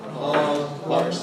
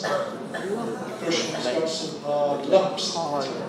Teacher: we need to put our intonation nucleus on the lumps